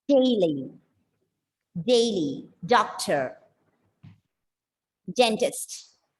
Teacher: you can feel your tip of the tongue is hitting just behind your upper teeth it's there it should not touch on the upper palate of